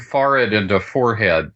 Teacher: all of the local speakers have turned forred into fore-head